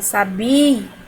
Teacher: O I tem um som forte e o A ele tem também um som forte. Então, não temos ditongo, nós temos hiato.